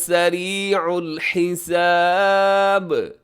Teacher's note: آخر میں با ہے تو یہاں قلقلہ کیجیے گا